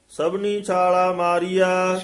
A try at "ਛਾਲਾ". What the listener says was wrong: ਛਾਲਾ ਪੋਲਾ ਹੀ ਬੋਲਣਾ ਹੈ, ਛਾਲਾ ਨਹੀਂ ਕਹਿਣਾ ਹੈ।